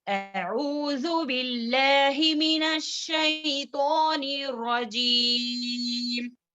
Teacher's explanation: वक्त की हालत में हम खींचकर जितना हो सके 2, 4, 6 हरकत के बराबर लंबा कर कर हम वक्त कर सकते हैं क्योंकि ये मद आरिदी सुकून है।